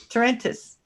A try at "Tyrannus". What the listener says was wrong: No, Tyrannus. There's no extra vowel. Syllable.